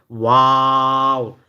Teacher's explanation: দুই ঠোঁট গোল করে সামান্য খোলা রেখে দেখেন দুই ঠোঁট গোল করছে সামান্য একটু ফাঁকা